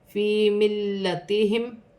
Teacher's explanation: لام مشدد ہے, جماؤ کے ساتھ ادا کیا جائے گا, 2 مرتبہ پڑھا جائے گا. ملتہم فی ملتہم میم ساکن میں غنہ نہیں ہوگا.